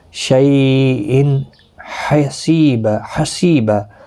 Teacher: اظہار حلقی ہوگا، گنہ نہیں کریں گے، یعنی ظاہر کر کے پڑھیں گے تنوین کو